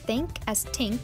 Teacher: replacing theta with T because theta doesn't exist in Spanish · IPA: /t/ for /θ/